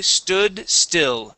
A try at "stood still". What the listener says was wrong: Remember with still, okay, use a short I. You had said steel is an E sound. We want to use an I sound. Still.